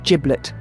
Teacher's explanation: pronounced with a soft J, or as linguists would say, a voiced apical affricate